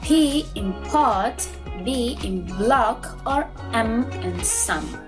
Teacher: We close our lips to make sounds like P in pot, B in block, or M in some.